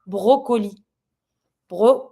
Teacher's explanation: when you say it in English broccoli you tend to forget about the second o in French you pronounce it